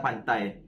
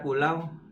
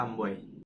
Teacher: dua huruf vokal atau diftong adalah gabungan dua huruf vokal yang diucapkan dalam satu suku kata di mana bunyi vokal pertama secara halus berpindah ke bunyi vokal kedua tanpa jeda